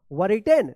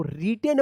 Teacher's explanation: वरिटेन नहीं, इसको रिटेन पढ़ा जाता है। W जो है ना यहाँ पे साइलेंट रहता है